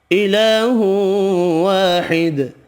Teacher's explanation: الہ واحد، کھڑی زبر الف مدہ یہاں بھی ایک ایک الف کی مقدار میں کھینچ کر پڑھیں گے، ادغام مع الغنہ ہوگا، دال ساکن پڑھا جائے گا وقف کی صورت میں، دال ساکن پر قلقلہ بھی کرنا ہے